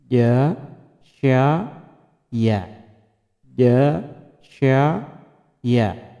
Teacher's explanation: wastul lisan, ya, yakni pertengahan lidah